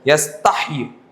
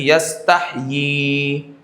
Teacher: اور تو اس لیے وقف کی حالت میں بھی ایسا نہیں کہ کھڑی زیر ہے تو اس کو ساکن کر دیا جائے، یستحیی ایسا نہیں، بلکہ یستحیی اشباع کے ساتھ کھینچ کر پڑھا جائے گا، حرف مد ادا کیا جائے گا